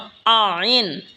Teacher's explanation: আইন হলকের মধ্যখান হইতে উচ্চারণ হবে আইন।